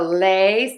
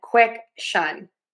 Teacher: Make the lay syllable longer, lay, and then quick shun. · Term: stress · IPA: /ˌɪnstəˈleɪʃən/